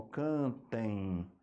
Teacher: como o som passa pelo nariz também além da boca a gente tem o ditongo nasal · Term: ditongo nasal decrescente